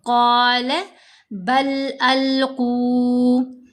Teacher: قال بل ألقوا، یہاں پر ہم نے دیکھا قال، قاف کے اوپر زبر ہے، ساتھ الف ہے، حرف مدہ ہے، تو ہم نے قاف کو 2 حرکات کی مقدار لمبا کیا مدہ حروف کی وجہ سے. پھر قاف حروف مستعلیہ میں سے ہے، اس لیے ہم نے اس کو پر پڑھنا ہے، موٹا پڑھنا ہے